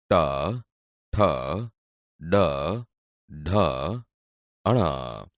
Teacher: બોલતી વખતે જીભ ઉપર દાંતના મૂળ ભાગને અડે છે એટલે તે મૂળધન્ય વ્યંજન છે